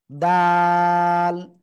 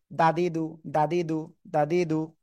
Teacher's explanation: জিহ্বার আগা উপরে দুই দাঁতের গোড়ায় লাগাবেন